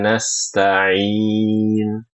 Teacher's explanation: ketika membaca huruf ain di ayat 5, Ibu-ibu jangan sampai mengubah ain menjadi hamzah